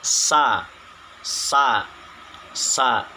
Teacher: Nah, jadi huruf sa ini secara pengucapannya atau penyebutannya yang pertama itu berdesis lepas. Jadi tidak ada tertahan sama sekali, lepas.